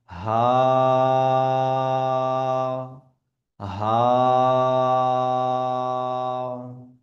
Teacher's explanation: হা, normally যেভাবে আমরা বড় হা পড়েছি, কণ্ঠনালীর ভেতর থেকে আওয়াজ বার করেছি, কিন্তু ছোট হায়ের ক্ষেত্রে কণ্ঠনালীর ভেতর থেকে না, বরঞ্চ যেখান থেকে শুরু কণ্ঠনালী সেই জায়গা থেকে বেরিয়ে আসবে 1 আলিফ বরাবর টেনে